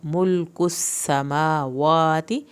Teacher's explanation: मुल पे लाम नहीं हिलना, काफ को पतला पढ़ना है